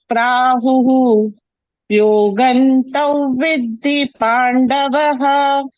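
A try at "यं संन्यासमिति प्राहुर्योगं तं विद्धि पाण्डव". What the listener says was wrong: Only Pandava. No Pandavaha. when you're addressing somebody, you don't put ha. When Arjuna wants to address Lord Krishna, he will not say, Hey Krishna, he say, Hey Krishna, Hey Rama.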